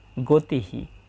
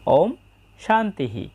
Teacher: বাক্যের শেষে যদি বিসর্গ থাকে তাহলে পুরো হ এর মত উচ্চারণ হয়। এবং বিসর্গর আগের বর্ণ যে কার চিহ্ন বহন করে বিসর্গ যে হলো এই হও সেই কার চিহ্ন বহন করে।